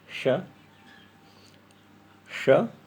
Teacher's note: तालव्य श में जिह्वा तालु को छूती है